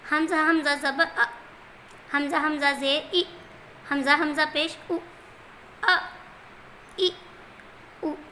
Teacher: میں نے زبر پہ بھی جھٹکا دیا، زیر پہ بھی جھٹکا دیا